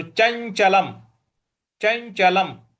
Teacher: ल के ऊपर पर जो अनुस्वार है उसका उच्चारण हमें म ले आना है। तो चंचलम चंचलम ही अ पर छोटी इ की मात्रा है।